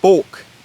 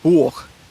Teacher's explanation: proto-Germanic long O remains long O in Old Saxon, but it becomes a diphthong in Old High German. So for example, you have Bolk in Old Saxon, but you have Buch in Old High German.